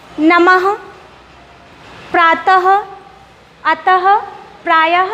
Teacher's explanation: देखिए जब मैं इन वर्णों को बोल रही हूँ तो लास्ट में हमें हा ध्वनि सुनाई पड़ रही है। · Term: विसर्ग